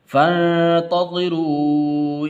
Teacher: فا کو نون کے ساتھ ملانا ہے، ٹھیک ہے، یہ الف درمیان میں گر جائے گا